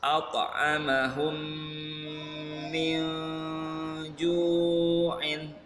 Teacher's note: Mim sukun ketemu mim ditahan, 3 ketukan. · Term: idgham mithlain